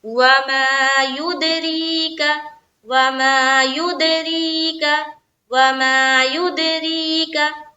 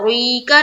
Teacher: क्योंकि रा का क्या रूल है कि रा के नीचे जेर आती है तो रा को बारीक रखनी है